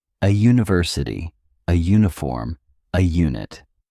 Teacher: the U makes a J sound like the Y in U which is a consonant sound.